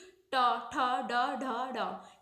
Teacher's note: मूर्धन्य जो होते हैं मूर्धा से बोले जाते हैं, जैसे कि टा, ठा, डा, ढा, डा। ये क्या, हमारी जीभ जो है ना बीच में टच कर रही है, हमारे तालु को बीच में टच जो करती है वो होते हैं हमारे मूर्धन्य